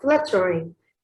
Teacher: This word has 3 syllables, and it is stressed on the first one. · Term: dactyl